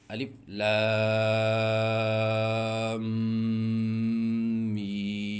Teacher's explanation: لام پڑھنے کے بعد آواز ناک میں لے کے جائیں ایک الف کے برابر، اور اس کے بعد میم پڑھیں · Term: غنہ